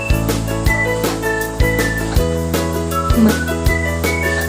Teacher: ang hangin ay hinaharang sa bibig ngunit pinapayagang lumabas sa ilong tulad ng m. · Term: pailong o nasal